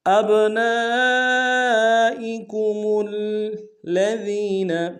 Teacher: ادا کریں گے، میم کو آگے لام کے سامنے لانا ہے، الذین کے لام کے اوپر تشدید زور دیں گے۔